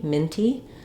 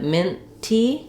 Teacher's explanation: my N can be long and flow right into the T